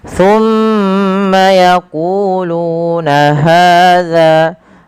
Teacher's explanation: keempat bacaan ini wajib dipanjangkan dua harakat karena ia mad thabi'i